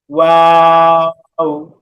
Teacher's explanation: দুই ঠোঁটকে গোল করে, দুই ঠোঁট গোল করে সামান্য ফাঁকা রেখে মাঝখানে, এই দেখেন, দুই ঠোঁট গোল করে মাঝখানে সামান্য ফাঁকা রেখে তিন আলিফ টান